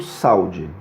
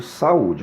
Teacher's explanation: eu estou separando o a do U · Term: iato tônico